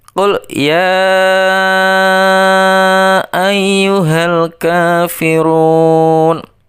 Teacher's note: Lafal ya itu dibaca 5 ketukan atau 2,5 alif.